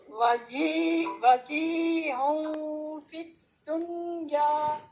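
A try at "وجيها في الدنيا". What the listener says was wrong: کیا بات ہے، آپ کی اخفا آپ کا ڈسٹرب ہو گیا ہے.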